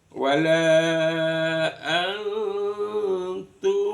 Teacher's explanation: Ta termasuk juga ee termasuk huruf ikhfa. Maka dibaca samar-samar. Bunyi n-nya yang dibaca samar. · nun sukun bertemu dengan ta dibaca samar bukan an tapi an di tengah-tengah antara nun sama ta namanya bacaan ikhfa hakiki. · Izhar itu jelas, syafawi di bibir. Bunyi mimnya dibaca jelas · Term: izhar syafawi